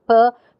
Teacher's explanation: it has the features a voiceless and it's bilabial it's it's a stop or an obstruent